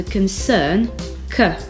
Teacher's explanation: Le son E dans la première syllabe de concern ressemble au E français et s'appelle le schwa. On le retrouve très souvent en anglais.